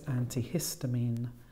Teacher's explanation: And then we had antihistamine. This time the stress is on the middle syllable, it's five syllables.